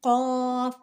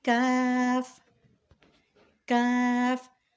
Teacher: قاف جس پہ 2 ڈاٹ ہیں اس کو پڑھتے ہیں ہمیشہ موٹا، قاف، اور یہ کاف اس کو پڑھا جاتا ہے باریک